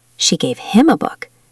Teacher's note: If I stress him, it means she gave it to him specifically, not to someone else.